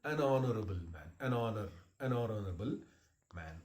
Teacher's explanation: There is a word honor, H-O-N-O-U-R, honor. The word honor begins with H, but that H is not pronounced. So that is why it is actually what I call silent.